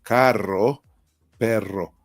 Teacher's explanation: We say, for example, carro, perro, and that's an extra vibration, very strong. That for English speakers is really difficult to reproduce this R sound.